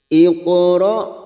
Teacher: yang mati asli di tengah kalimat qalqala sugro kita pantulkan